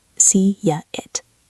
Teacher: When the first word ends in a wide lip sound like E, A, or I, your mouth is in a smile shape. This shape naturally creates a Y sound · It starts with I. To connect them, we use a Y.